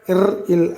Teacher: இர், இல் ஆகிய இரு மெய்களும் மேல்வாய் நாக்கின் நுனி வருடுவதால் பிறக்கின்றது.